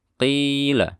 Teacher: dia bersifat jahar, jangan terdengar, tidak boleh terdengar suara aliran nafas. Qila, dan tidak boleh dilafalkan dengan suara tafkhim yang berlebihan. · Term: qaf